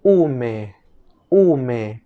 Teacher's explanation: La siguiente letra es la última de nuestras vocales, es la letra U. En fonética se le conoce como vocal cerrada posterior redondeada. En el náhuatl la U sonaría tal cual.